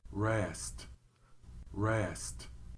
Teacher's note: tongue tip nor the back of the tongue should make contact there is no vibrating noise for the r in English